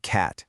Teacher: when a word ends in T, like cat, we often don't actually say that hard t sound at the end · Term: stop T